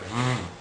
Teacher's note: This is extremely similar to the standard English pronunciation of V, but it's different in that the letter vet is made with the two lips touching and without the lips touching the top front teeth. Whereas the English V sound is made by lightly touching your bottom lip to your upper front teeth.